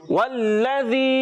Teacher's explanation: اعوذ باللہ من الشیطان الرجیم بسم اللہ الرحمن الرحیم والذی جی ہاں پیارے بچوں واو کی ادائیگی ہونٹوں کی گولائی سے, لام مشدد ذرا رک کر ادا کریں گے. زال کی ادائیگی کلیئر کریں گے, یعنی زا سے سیٹی والے حرف سے نہیں بدلنا چاہیے